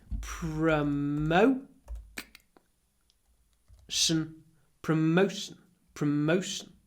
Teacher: Here we have the O sound, and sometimes when we say O, like no, there's a lot of w. No, go. But before sh, it's clipped.